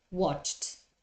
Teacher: you have to pronounce the Eed suffix with another voiceless sound in this case the T so for example the verb watch in past yes becomes watched · Remember that when a verb in infinitive finishes in a voiceless sound, voiceless, we said, is that we don't use our vocal cords, you have to pronounce the ed suffix with another voiceless sound. In this case, the t.